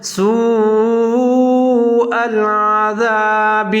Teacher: ذال کا خیال رکھنا، اس کو زا نہیں پڑھنا